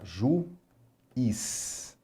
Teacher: É de fato o I aqui forma um hiato. Nós temos duas vogais juntas na palavra, mas em sílabas separadas.